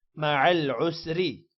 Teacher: را کو باریک پڑھیں گے کیونکہ را کے نیچے زیر ہے